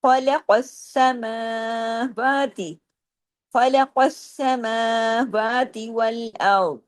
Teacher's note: سین پہ تشدید ہے نا، لیکن سین ڈبل ہے لیکن باریک ہے